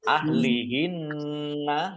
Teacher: nun tasdid dibaca gunnah atau mendengung ditahan 2 harokat.